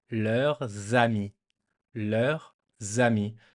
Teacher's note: So leur masculine, leur feminine is the same, and leur plural, we've just added a S because this is the sign of the plural. And because there's a S, it makes a little liaison, the little connection with the first vowel from ami.